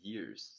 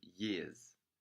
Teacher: I would say years, since I am more what you would call a general American speaker, but clearly uses the pronunciation years. There is no R in the end, but rather a schwa.